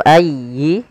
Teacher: sempurnakan di lafal ya yang tasydid karena dia ada bacaan linnya yaitu ayyi tasydid ditekan.